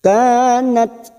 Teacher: ta sukun ini memiliki sifat Hames dan sidah